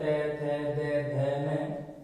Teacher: उसके बाद में त वर्ग है, त, थ, द, ध, न, इनका जब उच्चारण करते हैं तो हमारी जिह्वा दांतों को स्पर्श करती है, इसलिए इनको दंते भी कहते हैं।